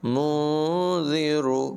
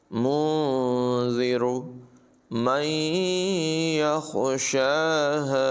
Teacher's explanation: نون ساکن میں اخفا ہے، اور را کو پر پڑھیں گے